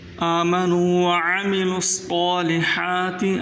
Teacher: स्वाद को मोटा करके पढ़ें